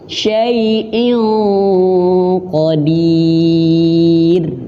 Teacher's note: Dan huruf qaf memiliki sifat tebal atau isti'la, maka bacanya harus tebal. Syai'in dan masuk hidung ya, karena gunnah